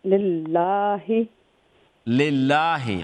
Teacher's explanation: लाम double letter double sound क्योंकि तशदीद है